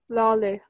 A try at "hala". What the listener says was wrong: Little bit softer at the first part. Lale. It has a actually like hat kind of thing. So you write it like, you read it like, ha, lale. A little bit longer. Lale. Yeah, then just like put them together. Lale.